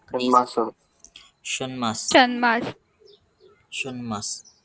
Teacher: त्या ठिकाणी ट वर्गाचा अनुनासिक न बाणाचा घेतला आपण